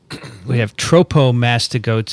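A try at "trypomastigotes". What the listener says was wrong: Trypomastigote. You did. You said tropo.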